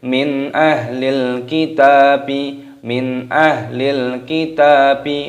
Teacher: nun sukun bertemu dengan alif dibaca idhar halqi, dibaca jelas